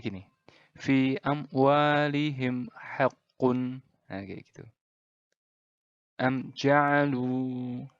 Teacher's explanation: izhar syafawi ini dibaca dengan jelas tanpa dengung